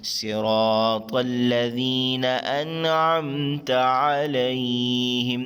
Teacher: شروع میں دیکھیں صاد موٹا اور سیٹی سے ادا کریں گے.